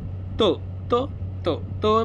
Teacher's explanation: त म्हणलं तर दाताचा उपयोग होतो त्याला दंत्य म्हणायचं